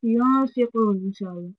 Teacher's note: Make sure you have that gunna in there, that nasal sound